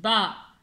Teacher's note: बा को हमने दोनों होंठे से अदा करना है